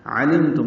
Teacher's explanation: عین وسط حلق سے ادا کریں گے، میم ساکن پہ اظہار شفوی ہے۔